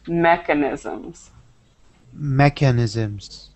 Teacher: So that stress is on the first E, mechanisms.